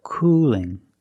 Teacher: The tongue is straighter. The tongue is straighter and thinner. It's not expanded at the bottom. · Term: light L